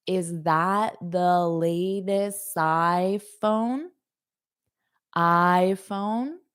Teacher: a little bit of a rising intonation because it's a question · you can just drop that T sound